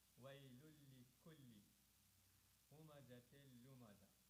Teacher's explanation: Wailulli. Here, lam has shadda but no extra stress, just regular stress